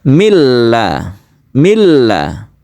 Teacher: suara nun mati ini masuk ke lam sehingga timbul tasydid. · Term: idgham bila guna